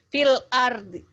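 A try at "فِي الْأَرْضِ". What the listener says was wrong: Fil art, D-nya nggak dibaca. Fil art.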